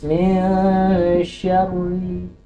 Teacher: Min syarri, bukan min syarri, ya. Walaupun ada tasdid tapi ra-nya ra kasrah, maka dia dibaca tipis. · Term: tarqiq